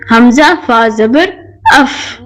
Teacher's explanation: حرف فا تب ادا ہوتا ہے جب اوپر کے سامنے والے دانتوں کا کنارہ نیچے والے ہونٹ کے گیلے حصے پر لگتا ہے